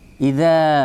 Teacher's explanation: Bunyi a-nya di sini adalah tipis karena dzalnya tipis.